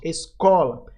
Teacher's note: o có aqui vai ser a sílaba mais forte